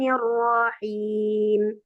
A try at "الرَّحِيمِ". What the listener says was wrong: Hati-hati ya, rohnya jangan ditamtikkan. Nirrohim. Jangan dipanjangin.